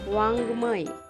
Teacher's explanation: याचा उच्चार ग वर्ण नाकातून उच्चारल्यासारखा केला जातो · अंग हे स्पर्श वर्ण आहे आणि याचा उच्चार कंठ आणि नाकातून केला जातो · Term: अनुनासिक अक्षर